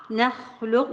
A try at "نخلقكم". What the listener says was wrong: نا يا ماما، نا يا ماما، وليس نا. اولا النون ليس لها علاقة بالتفخيم. شيء تاني، الفتح بين الفكين ملوش علاقة بالفتحة. نا نا نا نا نا